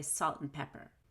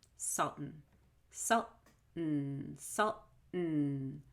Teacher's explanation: In salt and pepper, the word and is reduced to N, and that N becomes an unstressed syllable. We don't stress and when we say salt and pepper.